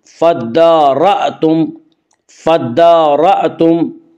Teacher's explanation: یہاں حمزے کو جھٹکے کے ساتھ پڑھیں گے